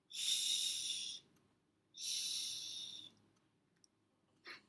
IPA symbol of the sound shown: ʃ